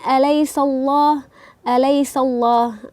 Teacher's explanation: Sin berharakat fathah bertemu dengan lafzul jalalah menjadi tebal dibacanya